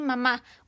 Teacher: usamos la voz y cerramos y abrimos los labios para formar la m. La lengua se acomoda para producir la A.